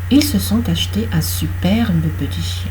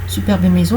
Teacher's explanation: Superbe maison, vous avez le RB de superbe et vous avez le M de maison. 3 consonnes qui se suivent, un E au milieu, on le prononce. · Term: la règle des 3 consonnes